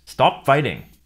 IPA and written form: stɑp ˈfʌɪɾɪŋ (¡Deja de luchar!)